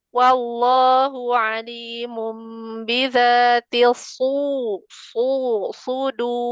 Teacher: tebelin huruf sodnya sama ro yang di akhirnya juga tebal